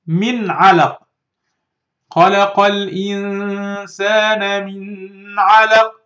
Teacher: Don't make غنة. Don't make nasal sound. Don't wait on this noon. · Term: إظهار